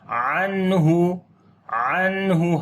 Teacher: عنہ نون ساکن کے بعد ہا گئے، اظہار حلقی ہوگا، نون کی آواز کو ظاہر کر کے پڑھیں گے اور نون کے اوپر صفت توسط بھی ہوگی. عنہ عنہ ہلکی سی آواز کنٹینیو ہوتی ہے نون کے اوپر